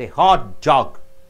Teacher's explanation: The center syllable is stressed.